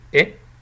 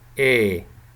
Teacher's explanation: It becomes more open. When it's short, it's really close, E, but when it's long, it becomes more open.